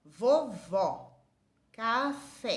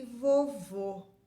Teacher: acento circunflexo é um timbre fechado